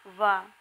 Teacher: दंत प्लस ओष्ठ से बोले जाने वाले वर्ण वा